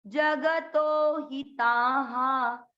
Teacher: तो को लंबा खींचा, ही को नहीं।